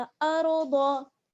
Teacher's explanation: हमजा को रॉ से मिलाएंगे, रॉ को पुर पढ़ना है, और आगे दौद है, जबर की हरकत है, और दौद को भी हमें पुर पढ़ना है। अर्द, दौ पढ़िएगा, ज़ाद मत पढ़िएगा, अर्द।